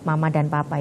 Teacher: mama dan papa itu hanya menggunakan bibir atas dan bibir bawah saja